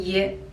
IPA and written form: jə (you)